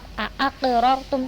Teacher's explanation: harus terdengar pantulan ya, getaran yang kuat. Aqrartum, tapi jangan ditahan. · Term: qalqalah sugro